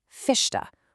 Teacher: the chiado pops up right before what linguists call voiceless consonants. Basically, the letters P, T, or C.